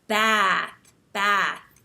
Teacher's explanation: and you hold your tongue up high and when you talk you have a more nasal sound because American English tends to be a little bit more nasal so then you say bath bath and that stretched out sound